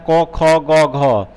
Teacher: है उसका उच्चारण स्थान कौन सा होता है कंठ होता है घ आप बोल के देखिएगा तो यह कंठ से निकलता है